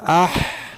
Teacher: हमज़ा हा ज़बर आह, जब आह करते हैं तो हलक से आवाज़ नहीं कर रही है, इसका मतलब है कि हा जो है ये हलक से अदा होता है, हा का मखरज हलक है